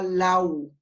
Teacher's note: queda la misma sílaba lau. Y ahí se produce el diptongo con la unión de la A con la U